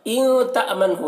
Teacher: نون میں یہاں پر اخفا ہوگا، نون ساکن کے بعد تا ہے حروف اخفا میں سے